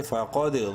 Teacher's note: فا زبر فا قوف دال زبر قود. قوف کو منہ بھر کے پڑھتے ہوئے دال پہ قلقلہ کریں گے